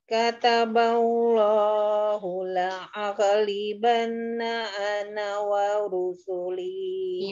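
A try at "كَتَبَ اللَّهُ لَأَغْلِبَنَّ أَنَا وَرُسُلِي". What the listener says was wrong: Iya, di huruf ghain nanti iya. Latihan lagi ya huruf ghain. La'au. Rokhwa dia tawasut ya tengah-tengah dia. Rokhwa ya, Bu. Ghain itu mengalir ya.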